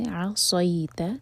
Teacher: عصیت، صی، انشاءاللہ منہ بھر کر اس کو صحیح نہیں پڑھنا، عین لائٹ اور حلق سے